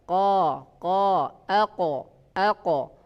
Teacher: Qaf dengan kaf, yaitu qaf di pangkal lidah menyentuh langit-langit atas